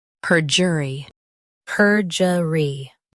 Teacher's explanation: Stress per and keep jer light. E is quick.